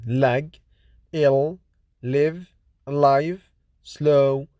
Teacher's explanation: l is voiced alveolar lateral approximate consonant